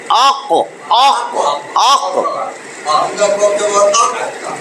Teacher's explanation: জিহ্বার গোড়া আপনি যখন বলবেন জিহ্বার গোড়া বরাবর এই যে তালু জিহ্বার গোড়া বরাবর তালুর সঙ্গে লাগাইয়া দেখবেন এই উচ্চারণটা আসে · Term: কফ